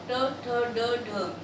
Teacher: जब हम इनको बोलते हैं तो इसमें हमारे जो है मूर्धा, ठीक है, उसको टच होता है। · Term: मूर्धन्य